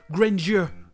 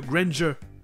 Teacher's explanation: c'est très souvent prononcé grandeur, comme s'il y avait le son J au milieu